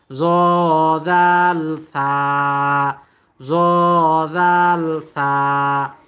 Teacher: জিবার আগা দুই দাঁতের আগার সাথে মিলাইয়া উচ্চারিত হয় জ জাল সা